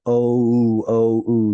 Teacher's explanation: the original pronunciation of VAV was more like a w which makes a sort of an o o o sound